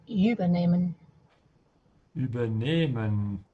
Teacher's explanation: Look at the dash under the E. The emphasis is on the second part. And the other clue you have is actually the H after the E, which just elongates the previous vowel.